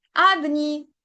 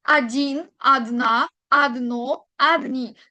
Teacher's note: Como no recae la tilde imaginaria, en la O significa que la leo como una A. Adin recae en la I. Adna en la A. Adno en la última O. Adni en la última I. Es donde recae la tilde o el acento, como lo podemos nombrar.